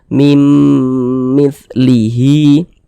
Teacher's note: ke huruf mim jadi mim mim jadi mim dia mim gitu kemudian di dengungkan digunahkan jadi suaranya itu kita tahan kita panjangkan sejenak mimah di bagian mim kita tahan kita panjangkan sejenak mim mitlihi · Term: dengungan